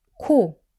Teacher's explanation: K is stronger and aspirated, meaning you release more air. So to get kiuk right, keep it soft.